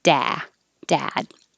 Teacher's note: the vowel is ah so the lip lips are back and the jaw is very open